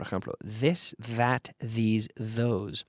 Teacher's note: with the vocal cords activated this is one type of th sound